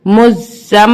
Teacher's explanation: मुज, जा मीम ज़बर ज़म, मीम मुशद्दद है और उसको रूल के मुताबिक हम यहाँ गुन्ना भी करेंगे, सख्ती से भी पढ़ेंगे